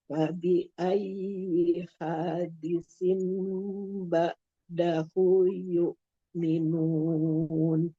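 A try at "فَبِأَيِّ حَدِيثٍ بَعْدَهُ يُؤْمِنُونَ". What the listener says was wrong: Jangan jadi panjang haknya ya. Pendek ini yang panjang. Hadi.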